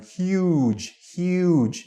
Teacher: you really have to stretch your u sound in huge huge not huj or HUD it's huge so make sure you're